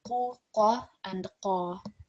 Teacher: all of these examples of qaf will be read in a thick or broad manner. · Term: thick letters